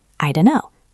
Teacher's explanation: I don't know becomes I dunno. The T disappears. The N's blend.